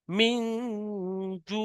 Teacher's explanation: নুন সাকিনের পরে জিম এসছে, ইকফায়ে হাকিকি